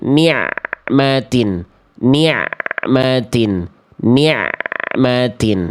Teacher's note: Jadi ketika melafalkan ma, baru lepas makhraj ainnya, ni'matin. Jangan ain ma-nya masih jauh, ainnya udah dilepas. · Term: ain sukun